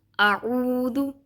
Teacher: عین جو ہے وہ حلق کے درمیانے حصے سے ادا ہوتا ہے، لیکن ہم ان دونوں کو حلق کے ایک ہی حصے سے ادا کر کے اس کی تجوید کو خراب پڑھتے ہیں۔